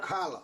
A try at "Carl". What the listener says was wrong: Carl. Not Carla, just Carl. Carl.